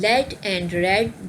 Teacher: The initial sounds in lead and red, these are basically liquids. These are both voiced. Lead, the starting sound, the initial sound is L, and red, the initial sound is R.